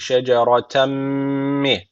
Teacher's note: tenvinden sonra mim gelmiş. İdğam-ı meel gune var. Guneli bir şekilde bağlıyoruz.